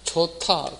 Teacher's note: 그러면 소리가 이게 좋다, 거센 소리 되죠. 히읗과 디귿이 만나서 거센 소리 됐다